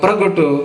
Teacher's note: ਸੋ ਪ੍ਰਗਟ ਸ਼ਬਦ ਵਿੱਚ ਪੱਪੇ ਦੇ ਪੈਰ ਅੱਧਾ ਰਾਰਾ ਹੈ। ਪ੍ਰ ਨੂੰ PRA ਬੋਲ ਸਕਦੇ ਹਾਂ, PAR ਨਹੀਂ।